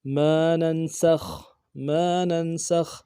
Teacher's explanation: نون کو نون کے ساتھ ملانا ہے، نون ساکن غنہ کریں گے، سین کو خا کے ساتھ ملانا ہے، خا کو موٹا کریں گے